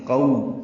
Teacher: قو ہونٹوں کو آگے کی جانب لائیں گے، نا تمام گول کریں گے